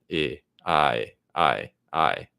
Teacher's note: So in the word face, it has the vowel A, that sound, which is really like two vowels, E, A, something like that connected together, face. And then price, that represents the I sound, which is again really like two vowels in my accent. It's kind of I, something like that.